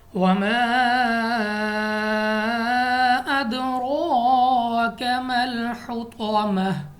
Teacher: را کے اوپر کھڑی زبر ہے، تو ہم نے را کو پر پڑھنا ہے، موٹا منہ اور آواز کو کھول کر۔ اس کے بعد ہمارے پاس ہا مخرج سے ادا ہوگا۔